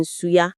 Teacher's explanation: That's what we call a plosive. Or are you letting the air leak out slowly, creating friction, that hissing sound, like the S in suya? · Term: fricative